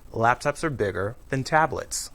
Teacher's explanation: we link the verb are to the word before it